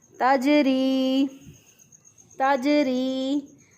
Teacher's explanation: जीम साकिन जो है वो भी हरूफ कलकला में से है, तो इसमें भी जीम साकिन पर भी साकिन हालत पर जीम पर साकिन हालत में कलकला होता है, यानी आवाज़ जो है वो बंद नहीं होती बल्कि हरफ की अदायगी के बाद भी आवाज़ जारी रहती है। तो हम इसको पढ़ेंगे ताजरी, ताजरी।